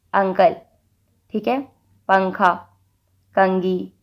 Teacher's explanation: یہاں پر نون کی آواز پوری طرح نہیں نکلی بلکہ اخفا ہو رہا ہے